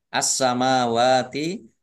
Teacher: As-samawati alif lam samsiah karena tidak dibaca langsung masuk ke huruf berikutnya yaitu sin. Ditandai sinnya ada tasdidnya. Sin tasdid ya dibaca double sinnya.